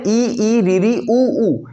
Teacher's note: ये जो पांच स्वर है इ ई ऋ री उ उ इनको बोलते हुए सबसे कम मुख खुलता है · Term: संवृत